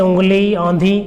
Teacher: ऐसे स्वर नाक से बोले जाने के कारण अनुनासिक कहलाते हैं